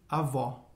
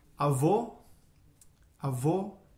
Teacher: Open O for grandma, closed O for grandpa.